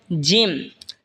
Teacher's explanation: জিহ্বার মধ্যখান তার বরাবর ওপরে তালের সঙ্গে লাগা উচ্চারণ হবে জিম